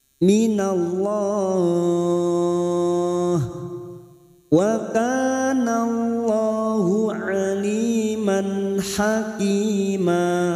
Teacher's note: Aliman fathah tanwin bertemu ha idhar halqi fathah tanwin dibaca jelas